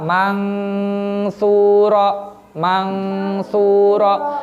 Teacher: Karena sa ini termasuk huruf ikhfa, maka dia dibaca dengung, dibaca ikhfa ya.